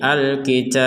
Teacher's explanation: Al-kitab memang harus dipantulkan huruf ba ini.